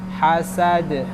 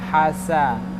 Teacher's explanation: Sinnya sin biasa, bukan tha.